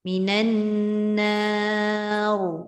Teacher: nun alif tu tetap nipis. Nah, tapi ra yang tebal. Jangan muncung dekat no tu.